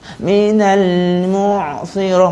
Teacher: Ain yang fasih adalah kita masuk dalam, sebut ain tu dalam sikit tapi suara tak putus.